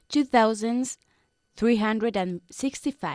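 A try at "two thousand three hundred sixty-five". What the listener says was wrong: Okay, don't forget when we're talking about thousands, we don't add the S. no se pronuncia, okay? 2,365.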